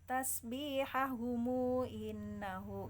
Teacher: Jadi mu-nya 2 harokat kalau wasl